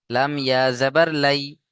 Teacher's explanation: ইয়া সাকিন, ডান দিকে জাবার ইয়া লিন, নরম আওয়াজে তাড়াতাড়ি পড়তে হবে।